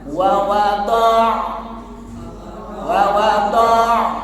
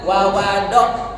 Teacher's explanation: Nah, yang perlu diperhatikan di sini adalah ain. Nah, ain bedakan dengan makhraj hamzah. Jadi harus ada tekanan pada tengah tenggorokan.